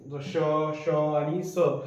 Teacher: जेव्हा तुम्ही श आणि स यांचा उच्चार करता त्यावेळेस एक प्रकारची ते याच्यामध्ये काय होते घर्षण होते आणि त्या घर्षणातून जणू काही होते उष्णता उष्मा निर्माण झाल्यासारखा काय